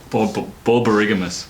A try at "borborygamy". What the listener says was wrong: There's no S in there.